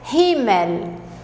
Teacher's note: E o L do alemão, nós temos de cuidar, porque o L do alemão é bem L mesmo, tá? A língua tem que ir lá em cima no céu da boca